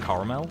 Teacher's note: of the time when I say it I say like caramel you hear that there's like a little ghost a it's like two and a half syllables